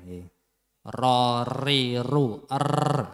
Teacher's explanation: Ro ini ya di ujung lidah, kemudian menempel di gusi depan, gusi pertama gigi seri. Kemudian ro ini ya sifatnya takrir. Takrir itu apa? Getaran lidah.